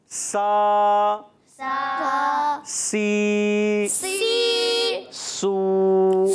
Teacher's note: اس سے پہلے والا آپ حرف دیکھ رہے ہیں وہ سا تھا، تو یہ جو حرف ہوتا ہے وہ بغیر سی ٹی کے ہوتا ہے، اور سین جو ہوتا ہے یہ سی ٹی کے ساتھ ہوتا ہے